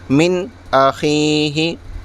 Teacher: اس لیے کہ نون ساکن کے بعد حروف حلقی کے 6 حرفوں میں سے حمزہ آ رہا ہے، تو یہاں اظہار ہوگا۔ نون کی آواز کو ظاہر کر کے جلد پڑھیں گے